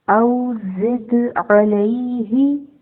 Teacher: آیت نمبر 4 میں دیکھیں، او زد علیہ، زا ہے، آف کورس وسلنگ لیٹر ہے، اس کی سیٹی کی آواز آئے گی، اور اس کو دال کے ساتھ ملائیں گے تو دال ساکن ہے، دال پر جھٹکا دیں گے۔ جھٹکا دینے سے مراد ہے قلقلہ کریں گے، آواز، دال کی آواز اپنے مخرج سے ٹکرا کر واپس پلٹے گی